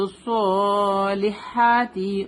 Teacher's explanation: ہا will be come from the middle part of the throat. Sharp ہوگا یہ، ٹھیک ہے.